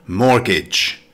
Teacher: It's a noun with two syllables. Stress the first syllable. · Note, the T in mortgage is silent.